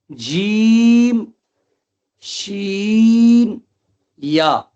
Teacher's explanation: جیم، شین، یا یہ تینوں حروف حروف مستفلہ میں سے. جیم پڑھیں گے، شین پڑھیں گے، یا پڑھیں گے، تینوں کو باریک آواز میں پڑھیں گے